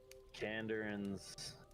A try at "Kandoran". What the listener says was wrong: Kandoran. Like more like door. You're say like a front door.